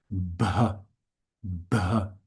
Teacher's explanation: Aspirated sounds. So you you formulate the B, but then you keep the the lips a bit closed and let it give a little explosion